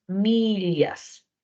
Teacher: Millas, doble L, la transcripción va a ser esta Y invertida, que es el sonido de la lateral palatal. Millas. Y en conexión, la C tiene valor oclusivo, por lo que es la K, y luego la X, como en taxi, tiene dos valores.